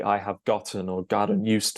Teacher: the 't' is softened into a 'd' in American English in the middle of words